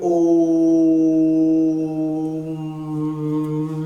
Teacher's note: ओ की ध्वनि ज्यादा आती थी, ऊ और म की ध्वनि कम आती थी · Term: प्लुत स्वर